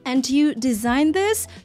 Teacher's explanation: обратите внимание, что у баронессы присутствует вопросительная интонация